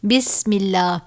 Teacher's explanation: اگر اللہ کے لام سے پہلے زیر آ جائے جیسے بسم اللہ تو ہم اس لام کو باریک پڑھیں گے